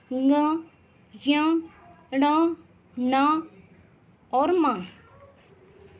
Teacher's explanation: क वर्ग से प वर्ग तक सभी वर्णों के अंतिम वर्णों को अनुनासिक कहते हैं, क्योंकि इनका उच्चारण करने के लिए श्वास को अंशतः नासिका से बाहर निकालना पड़ता है